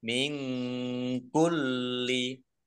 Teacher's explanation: nun sukun bertemu dengan huruf kaf bacaan ikhfa dibaca samar-samar